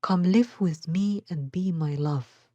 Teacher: here again we have an ayambic foot come live with me and be my love the stress is always on the second syllable